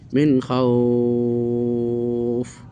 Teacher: এই দেখেন মাদানিনের দ্বিতীয় প্রকারটা এসছে, অ সাকিন ডানে জবর, মাদানিনের দুটি অক্ষর অ ও ইয়া, অ সাকিন এবং ইয়া সাকিন উভয় ক্ষেত্রে ডানে জবর হলে এটা মধ্যে লীন হবে, 2 থেকে 3 পরিমাণ টান